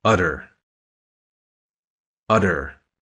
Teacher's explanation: see how your tongue bounces off the roof of your mouth that's how a rolled R feels